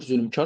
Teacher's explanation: Vurğusu son hecaya düşür. Bəli doğrudur. Zülmkar sondadır vurğusu.